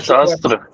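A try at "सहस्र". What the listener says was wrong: ठहरो, यही गलत हो रहा है, सहस्त्र नहीं होता ये।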